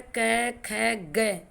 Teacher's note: कंठ से कै वर्ग बोला जाता है